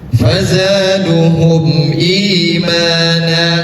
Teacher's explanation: Panjangnya dua harakat. dua harakat itu untuk mad badal.